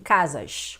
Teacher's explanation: os cariocas falam assim, chiando, né, o S